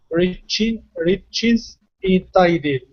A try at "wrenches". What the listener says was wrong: Okay, one more time, ren. Okay, get that N in there. Make sure your tongue touches the top of your mouth. Ren, wrench, wrenches.